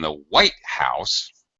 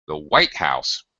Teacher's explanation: White, high on the first one, on the main syllable, where there's only one syllable in white, and low on the second, house. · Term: compound noun syllable stress